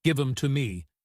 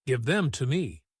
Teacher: Them often becomes em · Them often becomes m, as in give 'em to me, instead of give them to me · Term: reduction